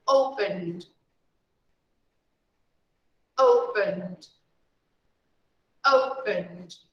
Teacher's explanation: we never pronounce the vowel e we just pronounce open and then d